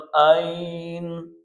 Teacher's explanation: یا ساکن سے پہلے زبر ہو تو وہ یا لین ہے، حروف لین میں سے یا ہے، تو ہم اس کو نرمی کے ساتھ جلدی پڑھیں گے۔